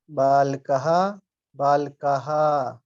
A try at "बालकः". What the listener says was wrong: प्रभु जी बालकः नहीं, बालकः। बालकः। ला के साथ आ बोलिए, ला बोलिए।